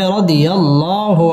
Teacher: আল্লাহ শব্দের লাম পুর হবে